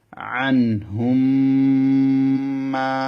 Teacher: আন নুন সাকিনের পরে হা, সেজন্য নুনটা গুন্না হবে না। ইজহারের নিয়ম এটা স্মরণ রাখতে হবে আপনাদেরকে।